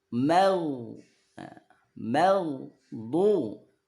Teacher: Gha ini dari akar lidah ya, ataupun dari ujung tenggorokan, dia mengarah ke langit-langit yang lunak. Nah, jangan sampai mantul.